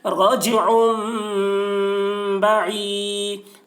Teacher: اس کو اقلاب کہتے ہیں، رجعم با، عین یا زیر عی، یا ساکن سے پہلے زیر ہے، یا مدہ ہوا، اس لیے یا مدہ کو ایک الف کے برابر کھینچ کر پڑھیں گے